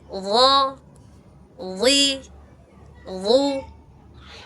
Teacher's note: dia punya sifatnya isti'la, pangkalnya naik.